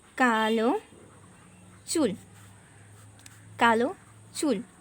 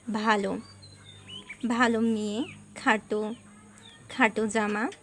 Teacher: অন্ত মানে শেষের অ কিন্তু ওকার হয়ে যায়, অর্থাৎ সংবৃত হয়ে যায়।